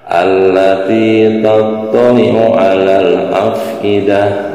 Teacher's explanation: Tak marbutoh disukunkan berubah menjadi huruf H.